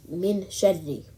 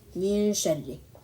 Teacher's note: The reciter does not use his or her tongue to articulate Nun as would be done in an Idgham scenario, Min Sharri. Rather, all that remains is a lengthened nasal sound before the next letter Sheen is pronounced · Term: Ikhfaa